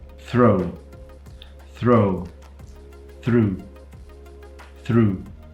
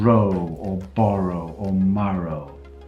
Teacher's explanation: you tap the R that comes after a dental fricative, which is to say, well, a voiceless dental fricative